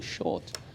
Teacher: And it took me a while to realize that I was not speaking with the right sound. And the other thing about Ghanaian English is that we tend to shorten vowels, whereas the English elongate, the vowels are longer.